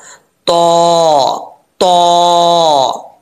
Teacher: जुबान की नोक ऊपर वाले दांतों की जड़ों से लगे, जड़ें यानी जो गोश्त के साथ दांतों की जड़ें मिली हुई हैं, वहाँ से गोश्त के साथ टच होकर ऐसे ऊपर की तरफ जुबान को उठाएंगे तो तो पढ़ा जाएगा, तो, तो, ठीक है। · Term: तो का मखरज